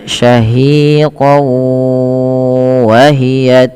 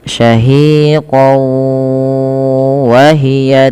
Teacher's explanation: yang dimasukkan di sini adalah tanwinnya kepada huruf wau kemudian ditahan disertai dengan gunah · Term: idgham bighunah